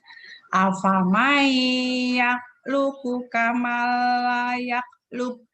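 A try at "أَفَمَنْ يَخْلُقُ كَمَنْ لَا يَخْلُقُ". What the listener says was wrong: Luq qalqalah. Afamai yakhluqu kamal la yakhluq. Qalqalahnya diulang lagi, tadi salah, masih belum. Yakhluq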